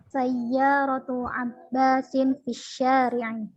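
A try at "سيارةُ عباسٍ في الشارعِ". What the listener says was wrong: Ahsan. Sahih.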